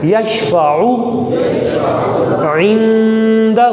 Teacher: عین حلق کے درمیان سے نکلے گا